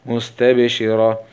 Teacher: ونقف عليها بالسكون العارض مع همس الهاء